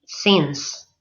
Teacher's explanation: pronounce sins with the vowel phoneme E, sins, and never the diphthong I